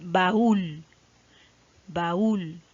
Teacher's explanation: Tengo aquí entonces el acento ortográfico, ¿por qué? Porque recae sobre la vocal cerrada la mayor fuerza de voz. No importó si terminó en N, S o vocal y solamente se colocó igual el acento ortográfico. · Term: hiato